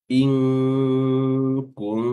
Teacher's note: Nun ketemu dengan huruf kaf, maka ketika nunnya ini kita sebut, maka makhrajnya itu sudah berada pada makhraj huruf kaf. Inku, yaitu aqsa al-lisan atau pangkal lidah. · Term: ikhfa